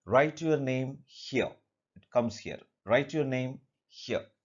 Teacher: So at the beginning in command, at the beginning only we raise our tone, we raise our voice. Whereas at the end the voice goes down.